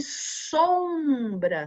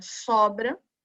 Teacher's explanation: o som sai um pouquinho pela boca e um pouquinho pelo nariz esse som é chamado de som nasal